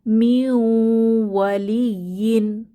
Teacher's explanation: নুন সাকিনের পরে ইদগম বা মিলিয়ে পড়ার হরফ ওয়াও এসেছে আমরা গুন্নাহ সহ মিলিয়ে পড়বো